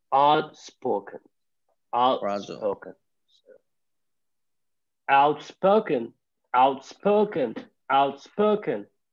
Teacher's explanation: A stress on the second syllable, right? Spoke.